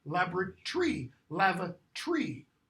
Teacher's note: All those vowels before that R-Y ending are completely removed.